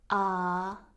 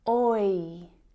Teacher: They are also vowel sounds, but they are different because each individual sound is made up of a combination of sounds. Compare that monophthong sound, ah, which is just one sound, with the diphthong sound, oi, which is 2 sounds combined to make one sound. So the oi diphthong sound is actually made up of the o and I vowel sounds.